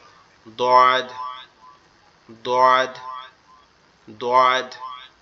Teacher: এই দদের উচ্চারণটা একটু কঠিন, দদের উচ্চারণটা একটু কঠিন, কেন কঠিন, কারণ এটা হচ্ছে আমাদের জিহ্বার গোড়া উপরের মাড়ির দাঁতের গোড়ার সঙ্গে লাগবে